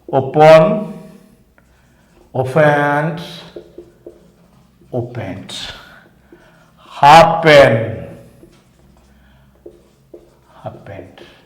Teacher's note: In these three verbs, the first syllable is stressed.